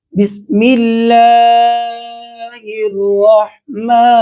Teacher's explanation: بسم اللہ، اللہ پر، اللہ کے نام لفظ پر کھڑی زبر ہے اور اسے ہم ایک الف کی مقدار لمبا کریں گے